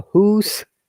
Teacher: now scottish people never say house yeah you should remember there's a hoos